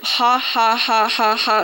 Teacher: you find nasality in posed laughter, the kind of ha ha ha ha ha sound